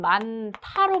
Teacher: 자, 많다 같은 경우에는 많다로 발음이 되는데 그게 무엇 때문이냐? 히읗하고 디귿이 만나서 자음 축약이 일어나죠. 거센 소리가 됩니다.